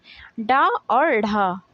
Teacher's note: तो दोस्तों अब हम नेक्स्ट बात करते हैं उच्छ्रिप या उत्क्षिप्त व्यंजन की। तो दोस्तों वे व्यंजन जिनके उच्चारण में जिह्वा झटके से ऊपर की ओर उठती है उन्हें उच्छ्रिप या उत्क्षिप्त व्यंजन कहते हैं। तो दोस्तों उत्क्षिप्त व्यंजन में आपके दो वर्ण आते हैं, डा और ढा।